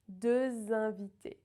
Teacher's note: the X is usually silent, but because we have a vowel at the start of the next word, we need the liaison, right? So it becomes a Z sound, deux invités.